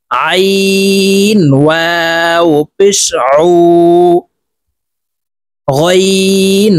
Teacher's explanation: আইন হরফকে হালকের মধ্যখান থেকে চাপ দিয়ে উচ্চারণ করতে হবে